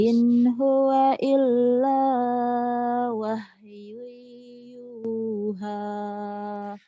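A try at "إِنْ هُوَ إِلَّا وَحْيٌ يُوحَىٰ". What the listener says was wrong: Hanya kurang ngedesah ya. Ini H gede, ini H kecil. In huwa illa wahyu yuha. Itu beda kan? Ha. Ini ha.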